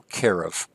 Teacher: it has an accent on the second last syllable